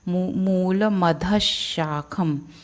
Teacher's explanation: ध के बाद जो विसर्ग है उसका उच्चारण अगले वर्ण पे डिपेंड करता है क्या है, तो अगला वर्ण श है, इसलिए वो जो विसर्ग का उच्चारण है श आएगा